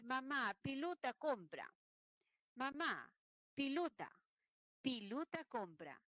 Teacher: está confundiendo la vocal E con la I, la O con la U, porque el quechua solo tiene 3, la vocal A, la I y la U. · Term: castellano andino